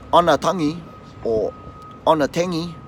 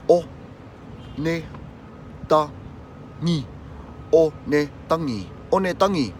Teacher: there's no extra A in there, and there's no stress on any of the vowels.